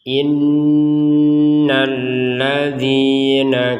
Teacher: di atasnya lam juga ada tasydid, tapi tidak usah didengungkan. Kalau didengungkan kan jadinya kedengarannya innal ladzina.